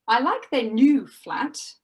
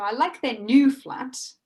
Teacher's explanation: the focus the most important word is new so the speaker is saying new as a contrast to the old flat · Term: contrastive type of focus